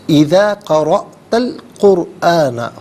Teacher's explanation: قرآن میں را ساکن ما قبل قاف پر پیش، را ساکن کو پر پڑھیں گے